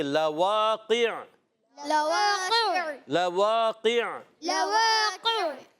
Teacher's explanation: قاف زبان کی جڑ اور تالو کے نرم حصے سے قاف ادا ہوتا ہے، زبان کی جڑ تالو کے نرم حصے سے قاف ادا ہوتا ہے، یاد رکھنا ہے۔ اور جب ہم وقف کریں گے عین کو ساکن کر دیں گے اور عین ساکن ہو جائے گا تو آواز آئے گی لواقع، لواقع، لواقع، لواقع، انما توعدون لواقع، انما توعدون لواقع، گڈ۔